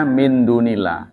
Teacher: itu harus tegas baca en, tidak boleh eng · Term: ikhfa akrab